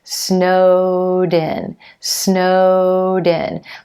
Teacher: my voice never stops between the two words